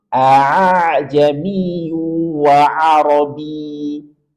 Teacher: Hamzah yang kedua di sini kita ringankan sehingga tidak total kita mengucapkan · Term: tashil